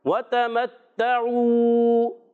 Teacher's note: تا مشدد ہے، ذرا رک کر ادا کریں گے۔ عین واو پیش عو، واو مدہ بھی ہے، عین کی ادائیگی حلق کے درمیان والے حصے سے ہوگی، یہ بھی آپ نے صحیح ادا کرنا ہے۔